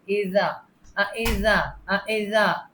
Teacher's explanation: جو tip of the ٹنگ ہے نا، دو دانتوں کے درمیان آگے کی طرف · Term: زال